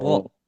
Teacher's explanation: kita membaca ro dalam harokat fathah, maka kita bacanya dalam keadaan tebal. Jadi dibacanya ro, bukan dibaca ra.